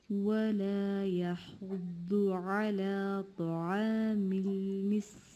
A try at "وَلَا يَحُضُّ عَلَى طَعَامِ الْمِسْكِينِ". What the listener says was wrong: This is good.